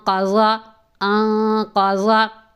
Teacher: آواز ناک میں لے کے جائیں گے، اور نون کی ادائیگی میں زبان جب تالو کے ساتھ ٹچ ہوتی ہے تو اخفاء میں وہ تالو کے ساتھ ٹچ نہیں ہوگی